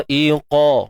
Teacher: Mad wajib muttasil. Mad asli jumpa hamzah dalam satu kalimah, mad wajib. So bacanya 4 atau 5 harakat lah. Dha'iqa. Huruf qaf tebal.